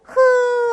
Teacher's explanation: 흐 하고 소리 내면 어디에서? 바로 이 목청에서 소리가 나거든요. 여기 목청 소리. 그러니까 여러분들은 지금 요 국어 달인 퀴즈 시간을 통해서 요런 용어들을 좀 기억해 두세요.